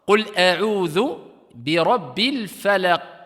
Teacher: Et ici, il y a une pause, il est en fin de ayah, donc c'est une qalqala, si on s'arrête ici, kubra, grande